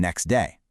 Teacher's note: Elision is dropping sounds entirely, like dropping the T in next day.